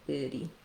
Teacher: You can do each either vowel for that first syllable, and then you just add an ity for the letters ity, a flap t, and a tense e sound